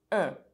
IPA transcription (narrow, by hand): ɛ̃